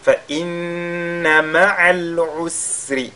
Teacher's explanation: فَإِنَّ مَعَ الْعُسْرِ يُسْرًا. فَإِنَّ, on fait un ghunna sur la lettre nun mushaddada